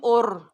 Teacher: آواز جو ہے رور کرے گی، رورنگ ساؤنڈ ہوگی را کی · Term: تقریر